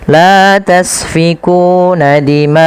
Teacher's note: panjangkan bacaan ma sepanjang 4 harakat karena pada lafal ma ini ada bacaan mad wajib muttasil. Mad wajib muttasil terjadi ketika adanya mad tabi'i yang bertemu dengan huruf hamzah dan hamzah tersebut pada satu kata. · panjangkan huruf ma atau panjangkan bacaan ma sepanjang empat harakat. Karena pada lafal maca mad wajib muttasil.